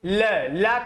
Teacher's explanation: जब आप ल का उच्चारण करते हो तो ये बगल से सांस, बगल से हवा निकल जाती है, इसीलिए इसको पार्श्विक व्यंजन कहा जाता है।